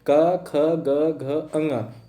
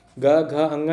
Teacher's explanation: क ख पहला दूसरा, ये हो गए अघोष। ग घ अंगा ये हो गए हमारे सघोष, ठीक है। अघोष और सघोष में आप लोग को डिफरेंस पता चल गया आसानी से।